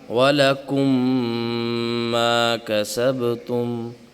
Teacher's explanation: ادغام کے ساتھ ساتھ غنّہ بھی ہوگا، اور غنّہ 2 سے 3 سیکنڈ کا ہوتا ہے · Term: ادغام شفوی